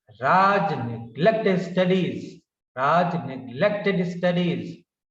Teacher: So stress, unstressed, stressed, unstressed, stressed, unstressed in this way. Tam ti tam ti tam ti. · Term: rhythm